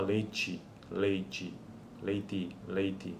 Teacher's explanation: por assimilação regressiva a palatalização da consoante oclusiva que passa a suar como uma africada algo próximo a leite